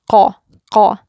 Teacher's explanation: So you want to aim for these two places, the tongue raised, hitting that soft palate and closing it, closes the airway. It's making that sound, qaw, qaw. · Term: qaf